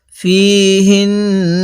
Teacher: হা লাগবে নুনের সাথে, কিন্তু নুনের মধ্যে আমরা গুন্নাহ করব